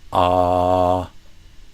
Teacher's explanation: It's because the back of your tongue goes down. So a so that's a low back sound